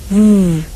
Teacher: when you make the sound for the letter V you use your lips and teeth